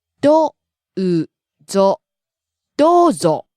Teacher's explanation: So, rising, falling. ど is high and うぞ is low.